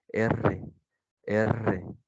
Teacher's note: tu lengua está haciendo la vibración